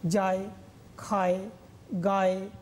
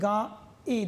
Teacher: অন্তস্থটা এ রূপে উচ্চারিত হচ্ছে, কিন্তু এ স্বরধ্বনিটা আবার অর্ধরূপে উচ্চারিত হচ্ছে। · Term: অর্ধস্বর